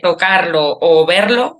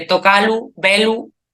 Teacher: También hay asimilaciones de la secuencia RL en el infinitivo enclítico